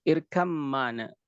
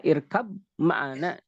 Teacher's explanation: Ketika irkab ma'ana, tidak mungkin kita mengucapkan seperti itu. Maka kita ba masuk ke dalam mim secara sempurna, dia diidghamkan secara kamil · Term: idgham kamil